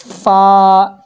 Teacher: ऊपर के दांतों के किनारे और निचले होंठ के तरी से, ये जो लुआब जहाँ होता है, ठीक है, यहाँ से फा होगा, फा, ठीक है।